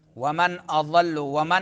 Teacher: ومن میں نون ساکن ہے تو اظہار ہوگا. اضل، نون ساکن کے بعد حمزہ آ رہا ہے تو اظہار ہوگا.